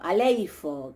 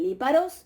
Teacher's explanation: Tenemos ahí la raíz leip, en donde tenemos una L, un sonido de la líquida, y en griego se pone por delante de la líquida un sonido A, una alfa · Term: prótesis